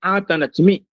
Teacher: यहां पर जो द्वितीय चकार है वह यम है